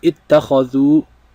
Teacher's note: we notice how the ending is being elongated with the u sound, and we see the alif.